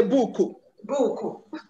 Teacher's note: No consonant at the end of the word. And so whenever we have consonants at the end of English words, the Igbo speaker is likely to introduce a vowel there.